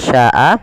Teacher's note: Syanya wajib dipanjangkan sepanjang empat harakat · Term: mad wajib muttasil